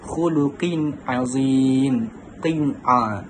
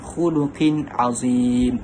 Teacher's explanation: qaf yang bertanwin itu bertemu dengan huruf ain, dibaca dengan jelas dan nyata, jadilah khuluqin azim. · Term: izhar halki